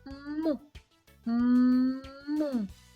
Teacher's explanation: звук м приголосний бо вимовляючи його він зустрічає перешкоду зубки та губки